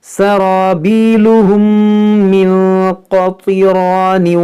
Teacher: یہاں پر دیکھیں میم ساکن کے بعد دوسری میم، یہاں پر ادغام شفوی ہوگا